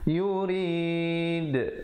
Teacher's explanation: Ma yurid read, readnya dibaca nipis ya, dan berikan pantulan qaqalah kubra di situ kerana berakhir dengan huruf dal yang diberikan tanda mati mendatang ataupun sukun mendatang kerana waqaf. Diwaqafkan dengan sekurang-kurangnya 2, 4 atau 6 harakat.